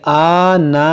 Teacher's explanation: یہ حمزہ پر کھڑا زبر ہے جو کھینچیں گے